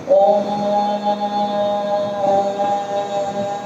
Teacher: अब इसका उदाहरण के लिए, जैसे हम संस्कृत में ओम शब्द बोलते हैं, तो ओम का जब उच्चारण करते हैं तो हम उसको कैसे खींचते हैं, ओम, मतलब ओ से लेकर मां तक के बीच में जो लंबी आवाज ध्वनि की खींचती है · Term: प्लुत स्वर